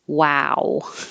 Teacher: The word you start rounded and end rounded.